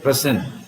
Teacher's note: the stress is on the first syllable here